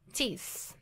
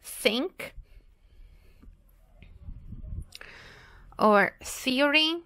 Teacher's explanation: E essa palavra teeth, ela termina com TH, e esse TH tem justamente esse som, que é só esse ventinho que passa entre os dentes